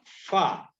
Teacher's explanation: ujung dua gigi seri atas bertemu bibir bawah bagian dalam